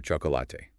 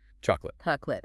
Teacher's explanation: We reduce that middle vowel almost to nothing.